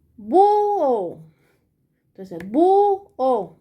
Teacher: ¿dónde es que está la mayor fuerza de voz? En bu. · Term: sílaba tónica